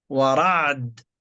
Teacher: العين مرققة ليست مفخمة. ورعد، استفال ورعد مستفلة.